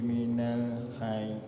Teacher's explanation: Minal hayy ditahan karena bertasydid ya, ada tasydidnya.